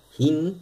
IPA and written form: h|(i)n ((h)in)